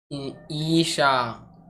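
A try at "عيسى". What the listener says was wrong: आइन से ईसा, ये छोटी सी। हाँ, नुक्ता वाला सीन नहीं है।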